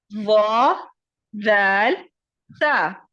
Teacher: زبان کی نوک جب ثنایا علیا یعنی سامنے کے دو دانتوں کے کنارے سے لگے تو وا ذال تا ادا ہوتا ہے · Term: نرمی والے حروف